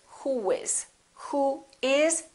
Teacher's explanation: rounded in the last vowel position for example in this case we don't put a little u in there we put a little w sound